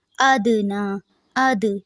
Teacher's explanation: دال پہ قلقلہ ہوگا، نون پہ کھڑی زبر ہے تو اس کو لمبا کریں گے